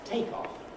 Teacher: the noun is take off stressed on the first